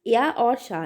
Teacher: या और शाह ये हमारा तालव्य से बोला जाता है